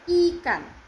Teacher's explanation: Nah, I seperti bunyi I pada kata ikan. Tajam, jelas, dan lidah itu berada di depan, bibirnya agak terentang.